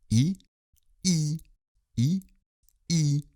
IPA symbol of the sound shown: i